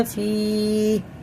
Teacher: یا ساکن سے پہلے زیر ہے تو اسے ایک الف کے برابر کھینچ کے پڑھیں گے